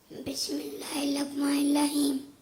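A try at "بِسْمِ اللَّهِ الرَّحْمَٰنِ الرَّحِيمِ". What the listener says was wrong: یہ جو ہے وہ را نہیں پڑھ سکتا، اس کی جگہ لام پڑھتا ہے.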